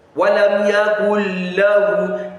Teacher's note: The Nun Sakinah has been inserted into the lam, and you can't even hear the Nun Sakinah at all. No nasalization comes with this one. · So that is idghamun kamil, full idgham, full insertion. You will not hear any sound of that nun at all.